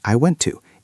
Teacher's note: We often drop the first T.